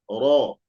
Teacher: ro ketika fathah tetap dibaca tafkim tebal ro bukan ra ro ro ro ru ru ru Ri Ri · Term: tafkhim, tebal